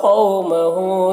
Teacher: واو لین ہوگا، اسے نرم آواز کے ساتھ جلد پڑھیں گے. ہو میں الٹا پیش ہے جو واو مدہ کی طرح ہوتا ہے، اسے ایک الف کے برابر کھینچیں گے.